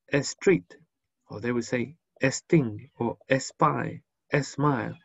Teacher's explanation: Paying special attention that people who speak Spanish usually put an E before the S. So people who speak Spanish who don't have any instruction in English, for example, they would probably say street, or they would say sting or spy, smile, and that would be incorrect. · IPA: /s/